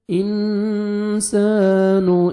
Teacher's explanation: نون ساکن کے بعد حروف اخفاء میں سے سین ہے، یہاں پہ نوز میں ساؤنڈ لے کے جائیں گے، اخفاء کریں گے